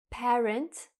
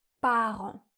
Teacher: Mes parents. Sauf que en anglais, on a un son « e », parent. En français, on a un son « a », parent.